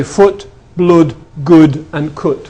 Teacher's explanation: in the North the split hasn't occurred and people say foot blood good and cut with the same vowel